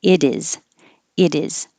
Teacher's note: I changed the T to a D and the S to a Z because it is sounds like a Z.